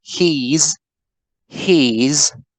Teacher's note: we have a fully long e